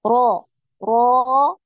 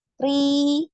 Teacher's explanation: kalau ro tadi naik pangkal lidah, ri ini turun ya, tidak dinaikkan pangkal lidahnya. Ya bedanya di situ, tafkhim dan tarqiq.